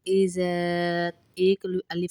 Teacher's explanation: زال کو زا کی طرح سختی سے نہیں پڑھیں گے بلکہ نرمی سے پڑھیں گے، اذا ایک الف کے برابر لمبا بھی کریں گے، جاء اذا جاء، اذا کو ایک الف کے برابر لمبا اس لیے کیا جا رہا ہے کیونکہ الف مدہ ساتھ ڈلا ہوا ہے۔